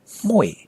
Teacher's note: smell sweet it's not mo a by the way that's different you have to start with a breathy nasally sound so you have to say muy not muy why does it